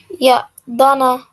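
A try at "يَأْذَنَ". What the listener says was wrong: Ya'dhana. This one is a dha. Okay, so it's got a dot there. So it's dhana.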